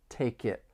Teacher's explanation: We can link the final consonant sound in take with the beginning vowel sound in it. Take it. We also have overlapping m sounds from me. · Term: linking